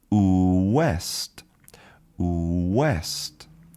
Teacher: our lips come together and they're very forward like we're giving a kiss and our lips are very round. So they're round and forward and we make that ooh.